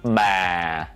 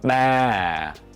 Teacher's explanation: you begin at the mid-low pitch and let your voice gradually fall to a lower pitch. The movement should be soft, slow, relaxed, and smooth.